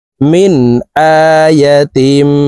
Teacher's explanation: মিন আয়াতিম, এখানে ইকলাব গুন্নাহি কারণে হবে, তানউইনের পরে ইকলাবের হরফ বা আসছে, এই কারণে এই ছোট্ট মিম দ্বারা পরিবর্তন করিয়া গুন্নার সহিত পড়ব